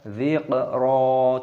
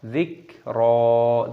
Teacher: Karena kaf itu bukan termasuk huruf yang memiliki pantulan suara ataupun yang kita kenal dengan istilah qalqalah